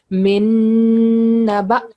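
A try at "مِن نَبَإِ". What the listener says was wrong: So ba don't have a shadda. We are not going to join noon with ba. It's Min Naba. Ba.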